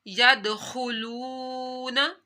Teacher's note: دال کے اوپر کلکلا کیا، دال حروف کلکلا میں سے تھا، خا کو موٹا پڑا